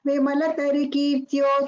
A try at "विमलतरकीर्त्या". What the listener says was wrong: Not Kirtyo, it is Kirtya again. Why is there a mistake? Kirtya, not Kirtyo.